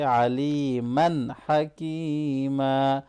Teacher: تنوین کے بعد ہا آ رہا ہے تو یہاں اظہار ہوگا، کلیئرلی پڑھیں گے